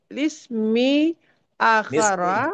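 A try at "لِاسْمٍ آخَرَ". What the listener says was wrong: Lismin. Tanwin. Nakirah. Lismin. Akara.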